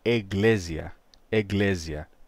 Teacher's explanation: Aí vamos ter uma sonorização. O som do K passa a G e o som S, representado pela letra S, passa a Z.